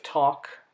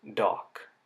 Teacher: The sound at the beginning of talk is the voiceless version of the sound that's at the beginning of dock.